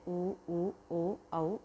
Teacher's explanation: वृत्ताकार क्या होता है, जिसमें ओठ गोल हो जाता है